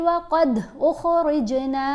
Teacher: یہاں دال کے اوپر بھی ہم نے کلکلا کیا, جیم کے اوپر بھی کلکلا کرنا ہے. وقد اخرجنا, ان کی آواز کو تھوڑا ہلا کر پڑھا جائے گا.